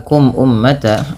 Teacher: Kemudian pada lafal kum ummata ada mim mati bertemu dengan hamzah. Maka hukum tajwidnya yaitu izhar syafawi. Yang dimana suara mimnya dibaca dengan jelas.